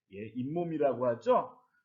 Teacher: 분명히 이와 몸 사이 아무것도 없었는데 니은 소리가 덧났습니다. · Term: 사이소리 현상